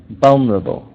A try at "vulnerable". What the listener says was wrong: More stress on the beginning.